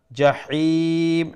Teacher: جحيم ح from the middle of the throat